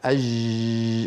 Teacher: بينما الصورة التي على اليسار هي التي مرت معنا منذ قليل والتي فيها نطق خاطئ لجيم رخوة عامية يجري معها الصوت